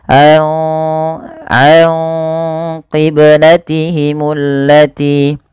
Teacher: Nah, di sini yaitu ada bacaan ikhfa hakiki, yang dimana suara nunnya dibaca dibaca dengan menyamarkan suara nunnya kepada huruf qaf. Karena huruf qaf agak jauh ya daripada makhraj huruf nun.